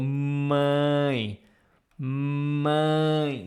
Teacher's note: It's kind of this nasal sound, but like in English you have the word a, but you have to pronounce with your nose.